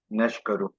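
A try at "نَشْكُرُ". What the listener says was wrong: नशको, यार काफ पे पेश पड़ो ना, ना क्या?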